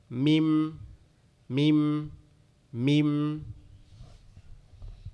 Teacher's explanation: আমাদের দুই ঠোঁটের নরম জায়গা, একসাথে লেগে পৃথক হয়ে আবার লেগে যাবে